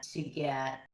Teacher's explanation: Notice her twos start to sound a little like ta.